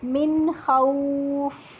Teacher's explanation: तो वाउलीन जो है वो पूरे होंठ गोल करके लंबा करेंगे। खौफ उर्दू की तरह नहीं पढ़ते इसको, मिन खौफ।